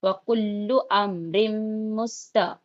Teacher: जबर की आवाज ऊपर को जाती है, जल्दी पढ़ेंगे